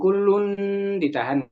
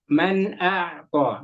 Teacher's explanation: nun tanwin nun sukun atau tanwinnya itu bacanya jelas, tidak disamarkan.